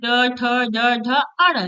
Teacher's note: ट के जितने भी वर्ग होंगे ट ठ ड ढ अण ये जितने भी अक्षर है आपके वो मुर्धन यानी मुर्धन्य से आपके उच्चारण किए जाएंगे